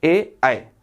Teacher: कंठ और तालू दोनों को मिलाकर होता है